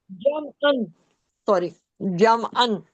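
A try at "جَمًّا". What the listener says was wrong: अन क्यों? हमजा थोड़ी है, मीम है, मीम का साउंड आएगा ना।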